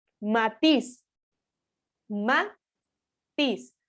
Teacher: tenemos que ver que la fuerza de voz recae sobre la vocal I